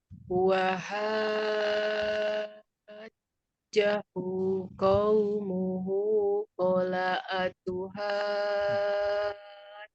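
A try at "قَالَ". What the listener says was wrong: Koknya kurang panjang Bu. Kola.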